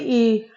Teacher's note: उसका उच्चारण जो है वो तालव्य है, मात्रा दीर्घ है, जीभ की स्थिति अग्र है, मुख विवर संवृत है और यह ओठ की स्थिति जो है वह अवृत्त मुखी है। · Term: बड़ी ई